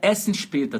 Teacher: Tá vendo que a letra E é aberta? O primeiro E?